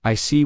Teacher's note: When you show understanding with I see, your tone drops slightly to show calmness. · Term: falling tone